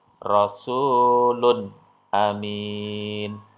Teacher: Jadi ketika ada dhammah tanwin ketemu dengan alif, maka dhammahnya atau tanwinnya itu dibaca dengan jelas, tidak boleh mendengung.